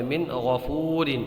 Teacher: یہ لفظ ہے من غفور، تو دیکھیے یہاں پر نون ساکن ہے، اس کے بعد میں غین ہے، یہ نون ساکن ہے، اس کے بعد میں یہ غین ہے، نون ساکن کے بعد میں حروف حلقی کا غین آیا ہے، تو اس وجہ سے یہاں پر غنہ نہیں، یہاں پر اظہار ہوگا